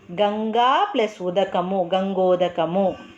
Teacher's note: ప్లస్ ఉదకము అంటే ఆ పురస్వరము ఊ పరస్వరము ఓ అనేటటువంటిది ఏకాదేశంగా వచ్చింది. ఆ ఊ అనేవి రెండు పోయి దానికి బదులుగా ఇంకొకటి ఓ అనేది ఏకాదేశంగా వచ్చింది